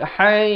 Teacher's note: ha pedas di tengah kerongkong